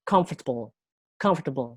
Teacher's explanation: kita memberi penekanan pada 3 huruf pertama, di silabus pertama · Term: word stress